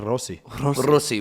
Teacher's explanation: rosi is supposed to have a rolled r in it and he says Americans don't know how to roll their R